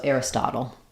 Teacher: Typically we would say this the same as like little or turtle, where we would use a flap and a syllabic L